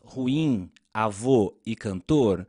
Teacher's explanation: tem como sílaba tônica Isto é a que nós pronunciamos com mais força a última sílaba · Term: oxítonas